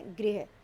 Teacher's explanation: ग्रह नक्षत्र, ग्रह घर, अभी से ग्रह बोल दिया जाता है जो जिसका अर्थ ग्रह होता, घर होता है, लेकिन ये ग्रह नहीं, ये गृह है, जो री ऋषि की मात्रा होती है उसमें छोटी ई की ध्वनि सुनाई देनी चाहिए, गृह।